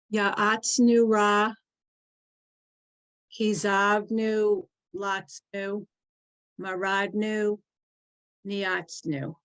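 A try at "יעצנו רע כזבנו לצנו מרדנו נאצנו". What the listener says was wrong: Okay, good.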